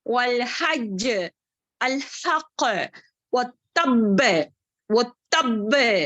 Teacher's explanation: 5 letters جو ہے وقف کی حالت میں شدہ کے ساتھ آئیں گے تو اس کو اسٹرانگسٹ خلخلا کریں گے